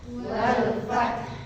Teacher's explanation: H-nya lebih panjang karena dia rakhwah.